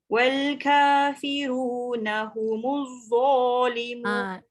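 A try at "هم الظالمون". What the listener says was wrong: Kejap, dia masih ada bunyi z. Dia tak boleh ada desiran. Humudz, hujung lidah keluar.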